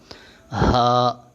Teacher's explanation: اس ہا اور اس ہا میں فرق یہ ہے، یہ ہا حلق کے درمیان والے حصے سے اور یہ ہا حلق کے آخر والے حصے سے ادا ہوگا